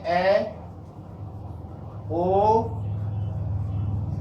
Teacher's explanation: इन वर्णों का उच्चारण करते समय मुख द्वार आधा खुलता है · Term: अर्धसंवरित